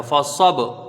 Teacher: صاد حروف مستعلیہ میں سے ہے، پر پڑھا جائے گا